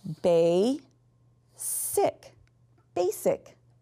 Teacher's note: my beginning syllable is actually an open syllable. So I'm going to have a long A sound.